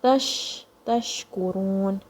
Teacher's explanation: you feel the sheen spreading in your mouth.